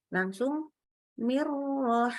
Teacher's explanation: min, nun sukun ketemu ro, sama langsung melebur ke ro, tidak boleh ditahan